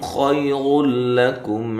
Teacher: را کو موٹا کرنا ہے، لام کو باریک پڑھنا ہے، اور یہاں نون تنوین کا ادغام بلا غنہ ہے، غنہ کے بغیر ہے